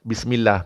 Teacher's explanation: Mil pun baris bawah vokal I. Mil, bukan mel. · Pastikan bunyi bis, bukan bes. Baris bawah vokal I. Mil pun baris bawah vokal I.